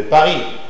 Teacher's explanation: C'est une consonne orale, occlusive, bilabiale, sourde.